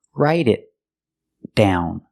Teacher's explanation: the T in it is a stop T because it's before a consonant. So stop the air. Make the T position and stop the air.